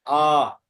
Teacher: এক বলতে যত সময় লাগে তাতে তার দ্বিগুণ সময় লাগে দীর্ঘ স্বর বা গুরু স্বর উচ্চারণ করতে। লঘু স্বরে যত সময় লাগে তার দ্বিগুণ সময় এই গুরু স্বরে লেগে থাকে। সেই জন্য একটু টান দিয়ে উচ্চারণ।